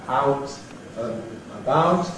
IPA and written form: ˈaʊt ən əˈbaʊt (out and about)